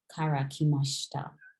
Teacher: the sh part is kind of silent. You kind of just run through it.